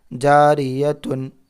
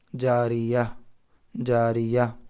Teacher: گول تا پر وقف کرنا ہو تو او ہائے ساکنہ، ہا کے اوپر جزم، ہائے ساکنہ بن جاتی ہے، جیسے جاریتن سے جاریہ، جاریہ، جاریتن سے جاریہ۔